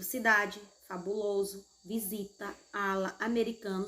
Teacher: são paroxítonas e elas não têm acento. A sílaba tônica é a penúltima.